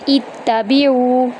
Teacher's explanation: عین کو وسط حلق سے ادا کریں گے اور عین کو 1 الف کے برابر لمبا کریں گے